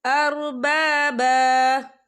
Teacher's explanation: وَالنَّبِيِّينَ أَرْبَابًا، یہ دیکھیے آپ کو چھوٹی سی توئی لکھی نظر آ رہی ہے، تو یہ وقف مطلق کی علامت ہے، تو یہاں پر ٹھہرنا بہتر ہے۔ وقف کی صورت میں 1 زبر پڑھا جائے گا، 2 زبر نہیں پڑھے جائیں گے